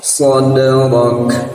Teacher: Kaf kita matikan atau Kaf mati itu terdengar hamsnya